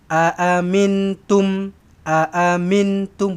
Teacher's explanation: Nun kosong ni bukan nun sukun. Nun kosong jumpa dengan ta. Ikhfa hakiki. Dengungkan. Samar-samarkan.